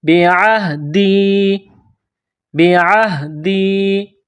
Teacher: دال کو یا کے ساتھ پلس کرنا ہے. اس کو تھوڑا کھینچ کر پڑھیں گے. مد ہے یہاں پر.